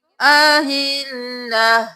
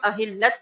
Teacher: आयत नंबर 189 में देख लीजिए, यहाँ पर हम वक्फ करेंगे तो अहिल्ला, यहाँ पे हम अहिल्लत नहीं करेंगे, ता को हा में बदल देंगे और हरकत भी गिरा देंगे